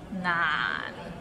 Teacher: It means difficult, and it's difficult to pronounce. So it starts with n and ends with another n. Nan, and it's in a low tone, so nan. Practice and you can get there.